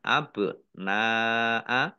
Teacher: panjang dua harakat Jim fathah Alif Mad thi'i tetapi karena bertemu dengan huruf hamzah dalam satu kata maka menjadi mad wajib muttasil dibaca panjang lima harakat